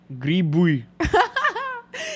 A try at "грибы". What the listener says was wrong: Yeah, I know that like English-speaking people have an issue with saying "ı." Грибы. Бы.